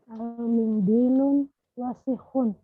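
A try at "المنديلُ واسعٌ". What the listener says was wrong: Nah, ini yang pakai alif lam tidak pakai tanwin, Om. Al-mindilu wasihun.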